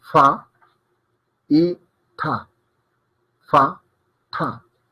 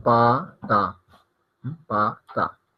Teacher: Fa es aspirada, pa no es aspirada, y está ta, la ta sencilla, ta, y está ta, que es más es la aspirada, ta.